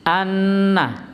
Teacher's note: pada lafadz anna itu harusnya di syiddah, dengung, gunnah, anna, tapi biasanya terlalu cepat, ana.